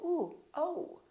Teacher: so it's actually two sounds it's o and O together so you have to move your mouth from all to oh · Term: the O sound